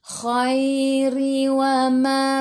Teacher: ra baris bawah kena baca dengan nipis